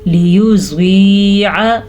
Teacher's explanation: ज़्वाद को पुर पढ़ेंगे। ज़्वाद हमेशा ही पुर पढ़ा जाता है और ये या मद्दा है।